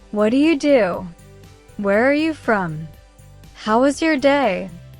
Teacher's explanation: Say them with rising tone at the end. Your voice goes up.